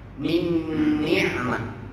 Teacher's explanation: Nun bertemu dengan nun. Ya udah, akhirnya kita baca, kita leburkan, kita jadikan satu huruf yang sama. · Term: idgham